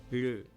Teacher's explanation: इसे बनाने के लिए आपको आपके टंग को आपके दांतों से जस्ट थोड़ा पीछे रखना होता है। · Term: वावल